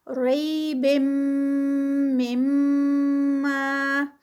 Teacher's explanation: پھر آگے میم آگے جو ہے میم میں مرج ہو رہا ہے، یعنی میم مشدد آ گیا ہے، تو اس لیے یہاں پر غنہ کا رول اپلائی ہوگا